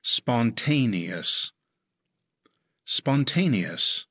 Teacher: It has 4 syllables. Stress the 2nd syllable.